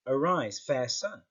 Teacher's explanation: like for example here we've got arise fair sun we've got three stressed words all close together · We've got 3 stressed words all close together, whereas that's breaking that whole unstressed, stressed, stressed, unstressed.